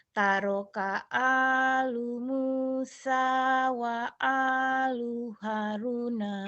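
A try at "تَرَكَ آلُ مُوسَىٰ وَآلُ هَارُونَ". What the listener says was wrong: Hanya panjang. Haruna. Panjang lagi. Udah bagus.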